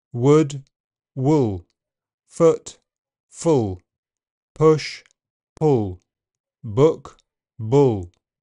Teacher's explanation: In general British, the sound is further back before dark L. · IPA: [ʊ]